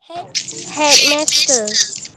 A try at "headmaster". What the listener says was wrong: Bukan headmister ya, headmaster. Ya, headmaster ya, headmaster. Bukan headmister, headmaster. Ya, cara sebut dia memang lain ya. Cara sebut dia memang lain.